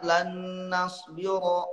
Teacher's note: lan nasbiro ro-nya tafkhim tetap kecuali Imam Waros bacanya itu tarkik